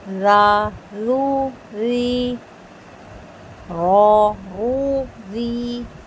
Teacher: زبر کے اور پیش کے ساتھ رو موٹا ہوگا اور زیر کے ساتھ باریک ہوگا